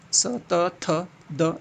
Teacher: स त थ द, दंत से आता है